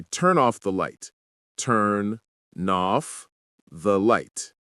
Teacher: Feel how turn ends with N and off starts with a vowel? That's why they merge.